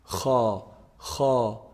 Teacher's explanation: throw letter to the mouth ha ha if you feel it it's pronounced from the top part of the throat ha ha you can feel the vibration in this part ha · ha is actually the closest throat letter to the mouth